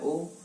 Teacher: ओ का उच्चारण स्थान क्या रहेगा, ए धन उ बराबर क्या हो गया, ओ। ए का कंठ होता है, उ का ओष्ठ होता है, तो कंठ और ओष्ठ हो गया